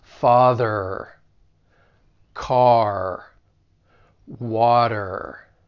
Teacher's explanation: I'm going to really emphasize that r at the end